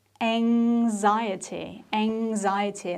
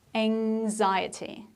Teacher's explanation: There is a nasal sound ng, which makes the pronunciation quite difficult.